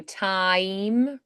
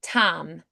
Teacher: They just kind of hold the one vowel. So we kind of eliminate that diphthong.